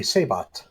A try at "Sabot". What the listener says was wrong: Sabot. The T is not silent.